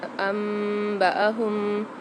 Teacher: انبأہم اقلاب والا قاعدہ آ گیا ہے تو یہاں پر ہم غنہ کر کے پڑھیں گے